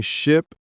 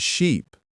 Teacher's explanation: Ship has a short I sound, like in sit. Sheep has a long E sound, like in see.